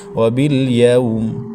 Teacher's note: یوم یا کے بعد واو ساکن ہے تو یہ واو لین ہے تو اس کو بغیر کھینچے پڑھنا ہے